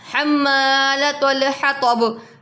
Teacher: त को पुर पढ़ेंगे। ह को बारीक पढ़ेंगे। इसका ख्याल रखिएगा। · حطب تو کو پر پڑھیں گے، ہا کو باریک پڑھیں گے